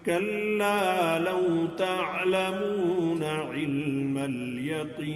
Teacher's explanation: جب آگے اس کو ملا کے پڑھیں گے کلا لو تعلمون علم الیقین تو اس کے اندر سے مد فرعی ختم ہو جائے گی